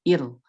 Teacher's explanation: huruf ra keluar dari torf, dari ujung lisan